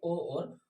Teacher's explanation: जो ओ है हमारा वो कंठ और ओष्ठ से बोला जाता है, इसलिए उसको दोस्तों कंठ ओष्ठ्य ध्वनि कह देते हैं, और कंठ ओष्ठ्य जो ध्वनि है वो दोस्तों ओ और औ हो जाती है।